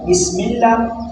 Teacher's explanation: لفظ اللہ کو باریک پڑھیں گے اس زیر کی وجہ سے